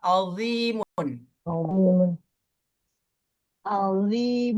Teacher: Kalau yang zi pakai dot, pangkal lidahnya, dinaikin sedikit Bu, biar tebal.